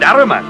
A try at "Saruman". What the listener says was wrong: Saruman, you idiot! It's pronounced Saruman! The S isn't silent!